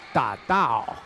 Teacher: it's a fourth tone down sound for da and then da is a flat tone